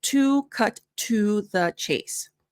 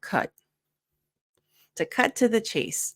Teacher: with American pronunciation we reduce to instead of two like the number two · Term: American reductions